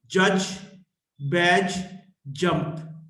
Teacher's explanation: voiced post alveolar affricate